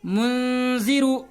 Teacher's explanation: نون ساکن کو غنہ کر کے پڑھیں گے، ناک میں چھپا کر پڑھیں گے